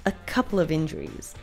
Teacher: the final sound we hear from the word couple is the L sound, which then connects with the word of right after